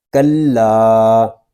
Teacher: لام کو ہم ایک الف تک کھینچ کر پڑھیں گے کیونکہ یہاں پہ الف مدہ ہو رہا ہے۔ الف مدہ اس لیے ہو رہا ہے کہ الف سے پہلے زبر آ گیا ہے، الف کے اوپر مد بھی نظر آ رہی ہے، اس کو مد منفصل کہتے ہیں، اور یہ مد منفصل اس وقت ہوتا ہے جب حروف مدہ کے بعد حمزہ دوسرے کلمے میں آ جائے۔